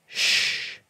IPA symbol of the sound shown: ʃ